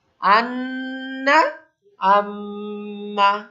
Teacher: অনেকে আমাদের ভিতরে একটা ভ্রান্তি আছে যে গুন্না মানে না কেনে উচ্চারণ করতে হবে, বিষয়টা কিন্তু এরকম না। গুন্না হলে যে মিমটা যেখান থেকে উচ্চারণ হচ্ছে ওইখানে আপনি একটু দাঁড়াবেন, একটু দীর্ঘ করবেন।